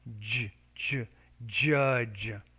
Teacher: pronounce this sound the same way as the ch as in cheap the only difference is you have to make the j with vibration of the vocal folds